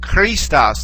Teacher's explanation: Okay, the letter chi, the letter ki, is basically like the same sound as kappa here, except that the letter ki has a little bit more of a guttural sound to it.